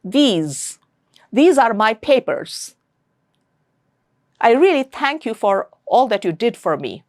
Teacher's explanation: th and the are lingua dental, or you can just call it dental, meaning that means the tongue will come in between your teeth and they are fricative. Air will come out through a narrow opening in your mouth, and th and the.